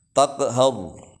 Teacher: Taqu itu adalah qalqalah sugro, memantul kecil, taqu. Kemudian har itu roknya adalah rok tafkhim, tebal, maka agak monyong bibirnya.